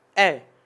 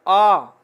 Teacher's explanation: ए एक मात्रा लगी, हल्का समय लग रहा, आ लंबा समय है। तो इस प्रकार से हल्का कम समय लगे वो ह्रस्व होता है, और ज्यादा समय 2 गुना समय लगता है वो दीर्घ होता है।